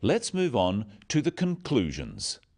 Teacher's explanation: Stressing conclusions because it's the key word in this sentence.